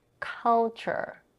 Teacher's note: The k in culture is also aspirated